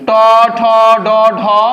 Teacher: মূর্ধা থেকে যেগুলো উচ্চারণ করা হয় সেগুলোর নাম হচ্ছে মূর্ধন্য ধ্বনি বা মূর্ধন্য বর্ণ